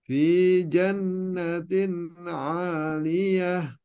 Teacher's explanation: Jan agak ditahan, ada gunnah jannatin.